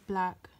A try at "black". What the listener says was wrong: No, that's sounding out. How many syllables do they have? Just one. Black. It's one sound. It's not black. If it was blacker, black, that would be two. It's just one.